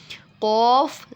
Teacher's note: قوف زبان کی جڑ اور تالو کے نرم حصے سے